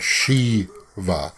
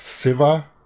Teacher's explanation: we would pronounce that Shiva, but you guys pronounced it, or at least I've heard it pronounced Siva instead of sh. There's no sh sound.